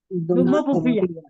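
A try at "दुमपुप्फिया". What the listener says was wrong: दुम्मो नहीं है, दुम्पुफिया है। वहां पे सिंगल म है, इसलिए आपको वहां पे प्रेशर नहीं देना है, ठीक है? दुम्पुफिया।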